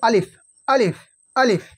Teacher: আলিফ উচ্চারণ হয় মুখের খালি অংশ হইতে। এই যে মুখের খালি অংশ, এই মুখের খালি অংশ হইতে উচ্চারণ হয় আলিফ, আলিফ, আলিফ। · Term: আলিফের মাখরাজ